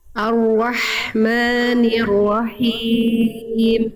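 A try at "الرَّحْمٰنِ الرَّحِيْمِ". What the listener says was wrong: tapi himnya tetap harus kuat him him lagi him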